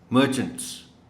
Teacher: مرچنٹس، اس میں بھی وہ انٹ ساؤنڈ ہے. مرچنٹس اسٹریس ایم پر ہے